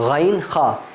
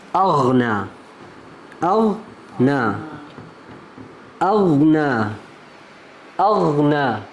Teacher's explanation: یہ دونوں حروف موٹے اور اونچے ہوتے ہیں